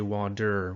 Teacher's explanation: different sound for example the word water it's spelled w-a-t-e-r but we don't say water we say water we use a D sound